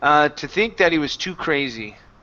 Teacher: instead of doing a stop T I would use a flap T and then drop the H